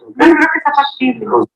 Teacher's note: En el caso del enunciado de la figura 3, que está en la pantalla, se observa un patrón descendente también, pero llama la atención que el movimiento tonal en la última sílaba tónica no alcanza un tono bajo, sino que se realiza como un acento plano